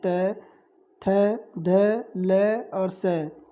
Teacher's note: जिन वर्णों का उच्चारण आपके दांत की सहायता से की जाती है उन्हें हम दंतव्य ध्वनियाँ कहते हैं